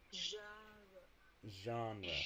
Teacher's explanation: what you do is you do a sh sound, like as in show, right? Sh, sh, sh, sh, and then you just add voice. So sh, z, sh.